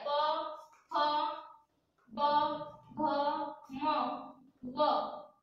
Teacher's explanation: दोनों लिप्स को टच करके ही ये लेटर आप बोल सकते हो